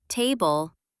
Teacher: in the word table, we put the stress on the first syllable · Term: trochee